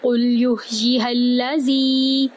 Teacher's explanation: قاف کو لام میں داخل کریں گے، قاف کو پر کرتے ہوئے. یا کو ہم ہا کے اندر داخل کریں گے وسط حلق کے ساتھ.